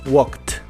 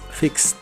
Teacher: sh y ch cuando le agregas Ed para hacerlos en pasado esa Ed la debes pronunciar como una t Así es no como e ni como d simplemente como t